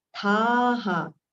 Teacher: Tha we have to prolong, and the visarga sound ha